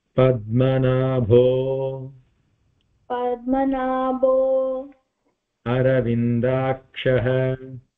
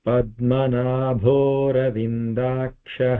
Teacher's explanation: there is an avagraha there so the a sound will be taken away